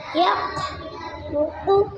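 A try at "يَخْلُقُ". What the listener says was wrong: आवाज़ से। खा कौन सा हरफ है? तो आप मोटा करें ना।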